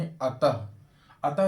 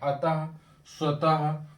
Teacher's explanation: विसर्ग स्वर के बाद आने वाला वह व्यंजन है इसका उच्चारण ह की तरह होता है जैसे हम ह का उच्चारण करते हैं उसी तरीके से यहां